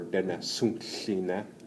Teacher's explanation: So the sound comes out of the side of your mouth. Yeah, side of your mouth, and that's you would say that for Dene Suntline.